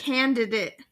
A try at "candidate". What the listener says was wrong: Well, it sounds more like you're saying a T. Candidate.